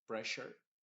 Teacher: Y esa doble s más la u se está pronunciando como una sh